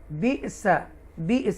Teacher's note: ٹویچ کریں گے، جھٹکے سے پڑھیں گے، حمزہ ساکن ہے